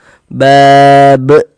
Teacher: Huruf qalqalah itu ada 5, salah satunya huruf ba. Huruf qalqalah yang 5 itu kalau dia sukun, pantulkan bab. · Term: qalqalah kubro